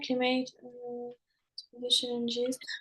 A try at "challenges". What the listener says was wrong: Oui, challenges, prononce bien le S, is. essaie de marquer le S en disant challenges.